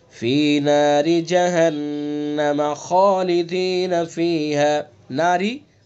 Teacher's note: ناری اس را کو بھی باریک پڑھیں گے چونکہ را کے نیچے زیر ہے